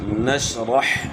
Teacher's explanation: را کو حا کے ساتھ ملائیں گے، حا کی آواز گلے کے درمیان سے نکالنی ہے